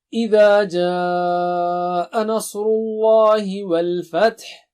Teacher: اذا جاء 5 حرکت ہے اور آ کی ساؤنڈ بھی، آ کی آواز بھی صاف ہونی چاہیے